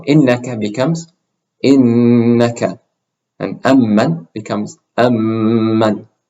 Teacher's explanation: when you have a noon with a shadda on it or a meme with a shadda on it, you're going to pronounce them with that additional ghunna sound. So innaka becomes innaka, and amman becomes amman.